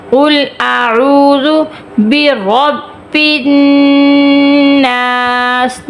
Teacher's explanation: قل، قل قاف موٹا آ گیا، قل اعوذ، اعوذ عین واو پیش رو تھوڑا سا کھینچیں گے